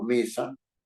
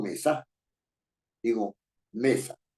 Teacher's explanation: puedo tener también una palabra tan sencilla como mesa no y la fuerza de la voz está en la penúltima sílaba